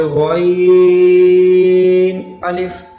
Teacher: یہ غین بھی حروف مستعلیہ میں سے ہے، اس کو پر پڑھیں گے